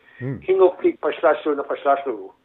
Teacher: in Nuuk they tend to chop off the end of the word.